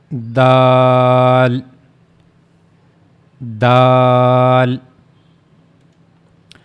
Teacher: But your tongue will connect to the gum not to the upper incizes. This is the tip of tongue and it will connect to the gum of the top two front upper incizers.